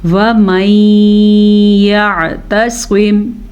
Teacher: یہاں پہ ادغام بالغنہ کا قاعدہ ہو رہا ہے تو غننے کے ساتھ پڑھنا ہے